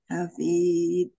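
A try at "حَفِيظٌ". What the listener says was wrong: Hafiz, tidak dipantulkan.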